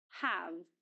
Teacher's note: It is pronounced with the full vowel sound ah. In other words, it's pronounced in the strong form have.